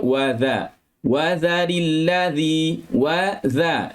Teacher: Masa sebut huruf dzal, maka kita letakkan lidah di bawah gigi. Di bawah tempat gigi yang tajam ni.